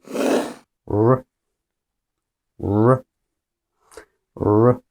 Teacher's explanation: don't need to touch the top of your mouth or the top of your teeth. It's kind of hovering in the middle, but a little curved back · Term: R sound